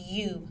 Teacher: is made using the tongue and the palate it is a gliding sound and is voiced the vocal cords vibrate